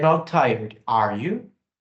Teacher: neste caso a entonação neutra ou descendente sugere que o falante tem certeza de que a pessoa não está cansada mas ainda busca a confirmação Ok Então esse foi o segundo